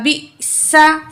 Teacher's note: سین میں سیٹی والی آواز ہوگی